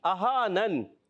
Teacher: Easy مد ہے, پوچھیں گے اہانن. حمزہ کی ادائیگی کلیئر رکھنی ہے اور آخر میں نون ساکن ہو جائے گا